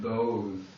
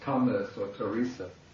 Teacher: And then the TH, it's always just an aspirated T.